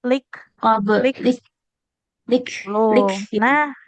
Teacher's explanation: kalau kaf itu dia ada percikan nafasnya